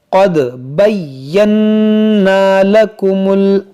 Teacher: यहाँ पर देखें या मुशद्दद है, नून मुशद्दद है, इसको पढ़ेंगे दो दो बार और नून मुशद्दद में गुन्ना करेंगे